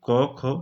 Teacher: यानी कि क वर्ग, ठीक है, कंठ से उच्चारित होता है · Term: कंठ ध्वनियां